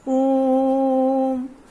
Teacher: प्लुत स्वर में दीर्घ स्वरों से भी अधिक समय उच्चारण में लगता है, क्योंकि इसे बहुत ही खींच कर बोला जाता है।